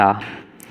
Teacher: पार्श्विक ला है जो जीभ के पिछले हिस्से से हवा भरकर निकालते हैं इसलिए इसे पार्श्विक कहा जाता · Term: पार्श्विक वर्ण